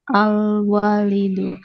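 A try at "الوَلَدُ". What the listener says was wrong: Ini al-waladu ya, bukan walid ya. Bedanya al-walidu dan al-waladu. Jika al-walidu setelah wawunya itu ada alifnya. Jadi walidu. Ada alifnya seperti ini, dia bacanya waladu.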